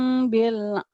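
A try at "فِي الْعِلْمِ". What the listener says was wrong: fil, fil, bukan bil. Fil, ya. bi sama pi nggak beda jauh ya, huruf jar juga.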